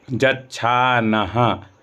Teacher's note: ना के बाद जो विसर्ग है ह्रस्व विसर्ग है, यानी ह्रस्व वर्णों का उच्चारण करने में जो समय लगता है वही इसमें लगेगा।